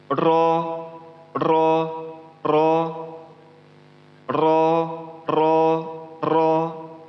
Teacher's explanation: Ro yang berbaris atas ini ialah dibacanya tebal atau ada getaran kecil di sana. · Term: takrir